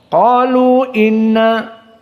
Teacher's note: mad jaiz munfasil dibaca hanya 2 harokat